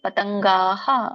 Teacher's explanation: ಗಕ್ಕೆ ಆ ಸ್ವರ ಕೂಡಿದಾಗ ವಿಸರ್ಗ ಕೂಡ ಹ ಆಗುತ್ತೆ.